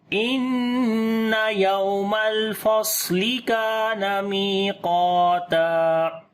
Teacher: स्वाद के ऊपर सिफ्त सफीर और सिफ्त हम्स दोनों करेंगे, ठीक है, और मोटा भी पढ़ेंगे।